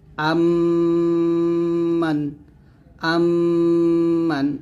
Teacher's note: মিম জবর আম মিম নুন জবর মান আম্মান আম্মান এরকম ভাবে দুই ঠোঁট মিল করে গুন্নাটা আদায় করতে হবে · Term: ইদগামে শেফাবি